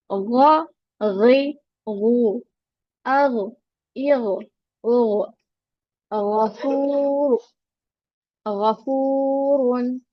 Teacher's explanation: गाइन sound comes from the top of the throat which is nearest to the mouth. जो mouth के करीब होता है वहां से गाइन को पढ़ते हैं गाइन।